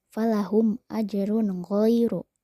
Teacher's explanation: huruf ro berharakat tanwin domah menghadapi huruf g maka harus dibaca jelas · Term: izhar